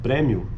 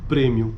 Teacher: a pronúncia aberta da vogal anterior média como em premmio em contraste com a pronúncia Fechada no Brasil